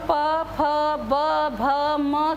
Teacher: जब हम प फ ब भ म कहते हैं तो जीभ नहीं बल्कि होठ एक दूसरे से आकर मिल जाते हैं, इसलिए ये ओष्ठ्य बन जाता है।